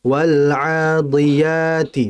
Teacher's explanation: Wal adiyati, bukan diyati. Yang betul di, tipis, ya. Tipis kan huruf dal.